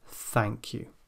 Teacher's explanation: the tongue is far out it's clamped between teeth and the breath is coming through the teeth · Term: unvoiced sound